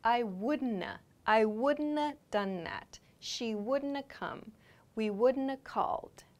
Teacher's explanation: So this n sound is the not part. This a sound is the have part.